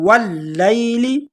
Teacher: واو کو لام کے ساتھ ملائیں گے اور لام کو تھوڑا جھٹکے کے ساتھ پڑھیں گے واللیل، کیونکہ لام پر جو آپ کو یہ 3 نقطوں والی شد نظر آ رہی ہے، اس کو کہتے ہیں تشدید۔